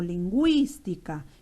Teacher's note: lingüística que la intensidad está en la antepenúltima sílaba